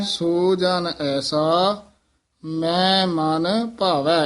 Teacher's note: ਮੈਂ ਬੋਲਣਾ ਹੈ ਕਿਉਂਕਿ ਇਹ ਹੈ ਹੀ ਮਮਾ ਨਾਸਕੀ